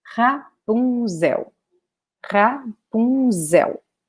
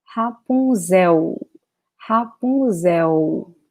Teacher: the L in Portuguese in this position, ending a word, will have the sound of U